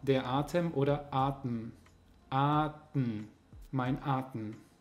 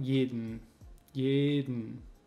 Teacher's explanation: Dementsprechend reduzieren wir das E. Wir sagen das E nicht. Es fällt komplett raus.